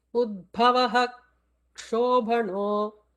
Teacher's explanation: if a visarga is preceding ksha, the visarga has to be fully pronounced, not to be left out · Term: full visarga